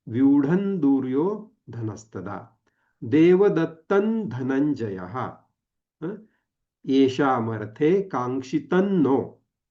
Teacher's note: म्हणजे इथे त्याचा उच्चार करताना आपल्याला न वर्गीय अनुस्वाराचा उच्चार करताना न नळाचा जो आहे त्या वर्गातील अनुनासिक आपण वापरलेला आहे